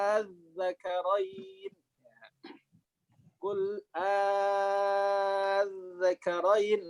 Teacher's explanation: Mustaqol. Oke, ketemu tasydid mat lazim mutsaqal. Wajib 6 harokat.